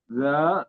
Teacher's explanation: Dza mad thobi'i dibaca dua harakat